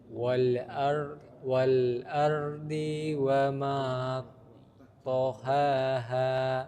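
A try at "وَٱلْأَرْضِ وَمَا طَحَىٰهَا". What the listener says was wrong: Tohaha. Dhad dia pendek. Jangan dibaca tamtid panjang. Wal ardi wa. Langsung ke waw. Diwa. Langsung. Diwa.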